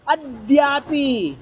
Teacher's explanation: ए तो देखो ये क्या है, ये देखो सुनो, इसको दुत्त बनाना है, इस दा को दो बार पढ़ना